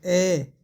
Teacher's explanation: इसके उच्चारण में दोस्तों जीभ का मध्य भाग है वह थोड़ा सा ऊपर उठता है